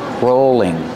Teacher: rolling pin use a long o sound for row rolling and the L is between vowels so it's a light L